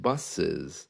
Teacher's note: it has a kind of a zed sound coming in but not completely